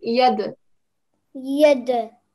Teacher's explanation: with the dal, we're giving a jerking sound because it's got a sukoon on top